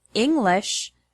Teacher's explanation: the word English has the stress on the first syllable, ing.